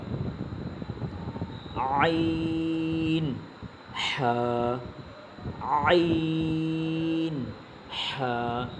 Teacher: দুই নং মাখরাজ হলকের মধ্যখান উচ্চারিত হয়